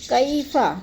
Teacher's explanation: یلین کو ہم نے لمبا بھی نہیں کرنا اور جھٹکا بھی نہیں دینا